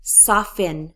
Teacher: The T is gone in my pronunciation when I say soften. I don't say soften, I say soften.